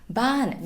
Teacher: i put a tone marker back on top this means that this word becomes a falling tone so we're going to go from high to low